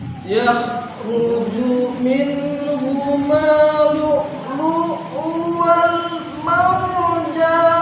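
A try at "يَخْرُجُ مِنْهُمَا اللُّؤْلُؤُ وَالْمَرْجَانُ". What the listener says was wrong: Ya Allah, bagus ya. Mantap.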